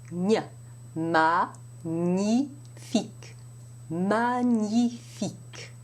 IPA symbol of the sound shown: ɲ